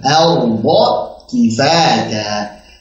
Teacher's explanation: Jadi A-nya tipis dulu, ra-nya tebalkan, bo tebalkan.